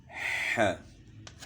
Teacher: ح کی آواز گلے کے درمیان سے ہے